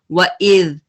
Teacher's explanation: وَإِذْ اس کو سافٹ پڑھنا ہے، وَإِذْ کچھ پڑھتے ہیں وَإِذْ نہیں کریں گے، ذال کے ساتھ پڑھیں گے وَإِذْ، ٹپ آف دا ٹنگ سے ہے